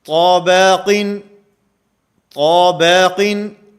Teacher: اب طا کو موٹا کیا جا رہا ہے، با کو باریک کیا جا رہا ہے ، اور با کی باریکی میں مبالغہ اتنا ہوا ہے کہ · با کی باریکی میں مبالغہ اتنا ہوا ہے کہ وہ با نہیں رہا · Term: امالہ